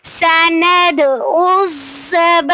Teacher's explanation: سند پہ دال پہ قلقلہ ہو رہا ہے